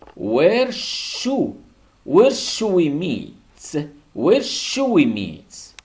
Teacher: Should, on ne prononce pas L, devient should.